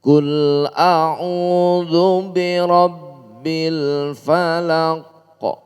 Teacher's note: qalqalah ini memantulkan bacaan pada huruf aslinya. Suara huruf aslinya qof.